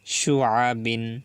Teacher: আইন গলার ভিতরে যাবে, কণ্ঠনালীর মাঝখান থেকে উচ্চারিত হবে